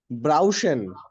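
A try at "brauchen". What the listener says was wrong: ব্রাউকেন হ্যাঁ এটা খ হবে ব্রাউকেন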